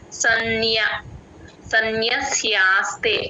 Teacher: సన్ ఆ usual గా న కింద న వత్తు వదిలేసి చెప్తూ ఉంటారమ్మా ఆ న వత్తు య వత్తు రెండు వినపడేటట్టు చెప్పాలి సన్య సన్యస్యాస్తే ఆ స కింద య వత్తు కూడా క్లియర్ గా వినిపించాలి